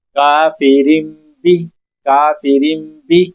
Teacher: इकलाब करना है। मतलब नून साकिन को मीम के साथ बदल कर पढ़ना है